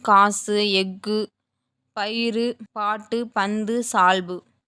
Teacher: ஆறு வல்லின உகரங்களும் சொல்லின் இறுதியில் வரும்போது ஒரு மாத்திரைக்கு பதிலாக அரை மாத்திரை அளவே ஒலிக்கும் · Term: குற்றியல் உகரம்